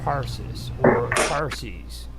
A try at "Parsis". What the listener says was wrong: As Parsons, you said Parsons, like Jack Parsons. Parsees, okay.